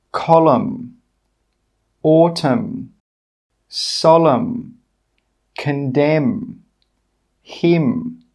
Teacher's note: In all of these words, we are not pronouncing the N. We are just making that /m/ sound.